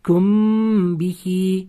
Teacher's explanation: sukunlik mim harfidan so'ng B harfi kelib qolsa, mana g'unna bilan o'qirdik. Bu igxvofo shaffavya qoidasi edi deb shunaqa o'qib kethingiz kerak. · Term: ixfo shafaviya